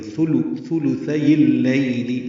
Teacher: لی نرمی سے معروف طریقے سے پڑھیں گے، لیل نہیں پڑھنا